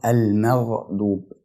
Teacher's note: بنتقل من الترقيق بتاع حرف الميم الى التفخيم بتاع حرف الغين من غير ما الحرفين يتأثروا ببعض، فبنطقها المغضوب.